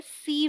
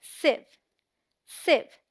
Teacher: Mostly लोग इसे सीव बोलते हैं, जो कि गलत प्रोनाउंसिएशन है। इसमें आई का जो साउंड है वो शॉर्ट है। शॉर्ट मतलब जल्दी से बोलेंगे, खींच के नहीं। SIEVE is one syllable and sounds like sieve, as in live.